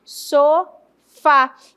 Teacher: E aí eu classifico o so como sílaba átona e o fá como sílaba tônica.